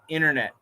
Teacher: the N can cancel the T. So we say internet.